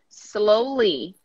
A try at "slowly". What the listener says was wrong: Blow the S. Don't say the I. Slowly.